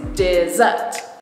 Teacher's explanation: Dessert is a 2-syllable word with the stress on the 2nd syllable. You can do it like this, dessert.